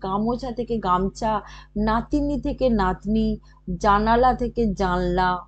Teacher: মধ্যখানে আকার একার ইকার সব লোপ হয়ে গেছে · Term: মধ্যস্বর লোপ